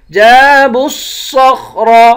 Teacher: جیم کے بعد الف ہے، الف حروف مدہ ہے، اس کو ایک الف کی مقدار کھینچ کر پڑھیں گے ، جَابُوا الصَّخْرَ با کو صاد کے ساتھ ملائیں گے، ان